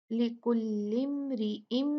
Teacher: यहाँ पर हम अच्छे से गुन्ना करेंगे क्योंकि मीम पे तशदीद है, शद्दा है।